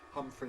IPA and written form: ˈhʌmfri (Humphery)